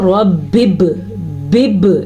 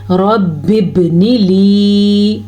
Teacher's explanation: با پہ ساکن ہے تو با پہ کلکلا کرنا ہے۔ کلکلا کا مطلب ہے جھٹکا دینا